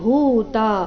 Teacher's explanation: ಭೂ ಮಹಾಪ್ರಾಣ ದೀರ್ಘ ಬರಬೇಕು